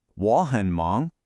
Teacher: the word hun is usually unstressed, almost neutral in tone. It's just a little connector word.